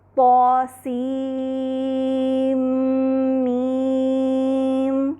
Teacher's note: سین کا نون میم متحرکہ کے میم سے مکمل طور پہ مدغم ہو جاتا ہے، ادغام کامل ہو جاتا ہے، اور غنہ جو سنائی دیتا ہے ہمیں وہ میم کسرہ کا ہے۔ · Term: ادغام کامل مع الغنہ